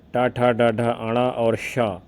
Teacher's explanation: इसका उच्चारण स्थान मूर्धन्य है।